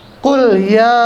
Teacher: Panjangnya berubah, yang tadinya 2 harokat atau 1 alif berubah menjadi 5 harokat atau 2 alif setengah. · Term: mad jaiz munfasil